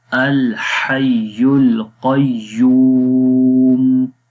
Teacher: اور قوف کو موٹا پڑھیں گے اور قوف کو یا کے ساتھ ملائیں گے سخت آواز کے ساتھ